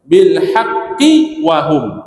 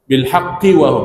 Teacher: Haqqi huruf qalqalah yang bersabdu, tidak ada qalqalah.